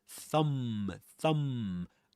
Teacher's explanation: You only pronounce the m sound at the end.